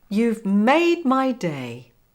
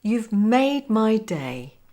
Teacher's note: Now say, you've made my day, with the stress on made.